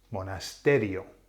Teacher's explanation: a nose rule so does it fall on the I no the I and the O count as one so the emphasis falls on the a